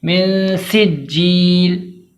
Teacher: واضح کر کے پڑھیں گے، سیٹی کی آواز بالکل آنی چاہیے، جیم کو 2 بار پڑھیں گے، تاخیر کر کے پڑھیں گے ، جمعوں کے ساتھ ادا کریں گے تاکہ تشدید والا حرف